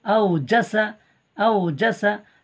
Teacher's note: হামজা ওয়াও জবর আও, ওয়াওলিন, তাড়াতাড়ি পড়তে হয়, নরম আওয়াজে তাড়াতাড়ি পড়তে হয়